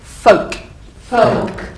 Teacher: there's no l imagine the L is not there